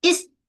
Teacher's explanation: pastikan ada desiran bunyi desiran is sekali dengan rakhawah suara mengalir. Jangan ada desiran tapi terputus.